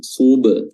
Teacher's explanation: Huruf ba qalqalah memantul